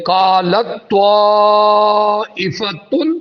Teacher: پہلے کلمے میں تا ساکن، دوسری میں طا مشدد، تو ساکن والا تا طا میں مدغم ہو گیا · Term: ادغام متجانسین